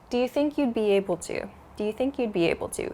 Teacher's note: this you would, we reduce this to you'd